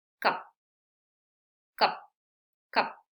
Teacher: Sí, no digo cup, cup, cup. Sí, con una sola salida de aire súper rápido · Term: sonido cortito